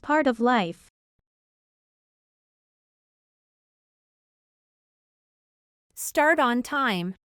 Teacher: en el caso de que la t se encuentre precedida de la r la t por lo regular sería pronunciada como una flap t